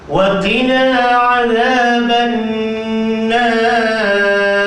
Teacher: Ra yang ujung tu kena tebal.